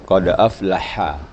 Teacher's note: Dia agak buka mulutnya. Ini huruf ha. Dia ada hamasnya, ada hembusan ha.